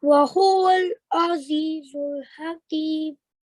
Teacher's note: ayn is a throat letter as well, same as ha, which comes from the middle of your throat. And when you pronounce it, it will be a flexible sound.